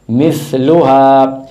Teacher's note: یہ جو زبان ہے یہ اوپر والے دانتوں کے کناروں پہ لگے گی آگے